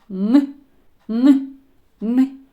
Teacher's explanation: коли ми його вимовляємо наші губи в положенні посмішки язик піднятий вгору упираються верхні зуби та альвеоли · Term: звук н